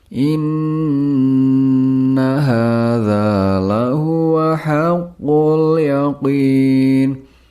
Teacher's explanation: nun dengan tashdeed harus dibaca dengan bunyi sengau